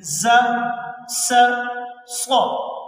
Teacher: دانتوں کے درمیان سے ہوا کے ذریعے سے یہ 3 حروف ادا ہو رہے ہیں